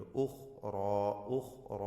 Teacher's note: കുറേ റാ ഈ വചനത്തിൽ വന്നു, എല്ലാം തഫ്ഖീം ചെയ്യേണ്ടതാണ്. ഉഖ്റ എന്ന് പറയുമ്പോൾ റാവും അലിഫും രണ്ടും തഫ്ഖീം ചെയ്ത് ഉച്ചരിക്കണം. ഖാഇനും തഫ്ഖീമുണ്ട്.